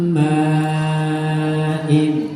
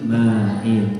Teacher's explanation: nun sukun atau tanwin bertemu mim dibaca dengung namanya idgham bighunna